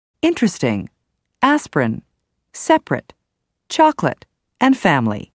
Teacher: the first a in separate the second o in chocolate and the i in family are all dropped so that you hear interesting aspirin separate chocolate and family some · the first E in interesting, the first I in aspirin, the first A in separate, the second O in chocolate, and the I in family are all dropped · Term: dropped syllables